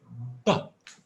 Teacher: it's bilabial because I use the two lips and it's also a little bit voiced but because I can feel a vibration here in my throat